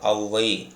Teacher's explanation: சொல்லோட வந்து முதல்ல வரும்பொழுது இது இரண்டு மாத்திரையிலிருந்து ஒன்றரை மாத்திரை அளவா குறைந்து ஒலிக்கும். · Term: அவகார குறுக்கம்